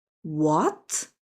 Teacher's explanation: the second tone, rising up like, what? Surprising sound.